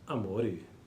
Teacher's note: pronuncia la parola amore con la O chiusa